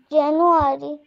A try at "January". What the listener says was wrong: না, আরই না, রয়ের সাউন্ড একটু সুন্দর করবো, জানুয়ারি, আরি, এই যে আরি, রি, জানুয়ারি, আবার বলো।